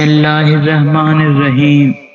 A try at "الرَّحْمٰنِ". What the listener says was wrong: را موٹی پڑھنی ہے، را کے اوپر زبر آ رہی ہے. میں نے شروع میں یہ چیز بتائی تھی، را کے اوپر جب زبر یا پیش آئے گی تو را کو موٹا پڑھیں گے. رحمان اور ہا کلیئر نہیں ہوتی.